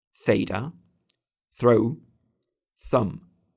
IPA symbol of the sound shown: θ